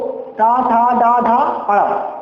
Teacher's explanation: यानी कि दंत के नीचे और ताल के ऊपर, तो उसे बोलते हैं मूर्धा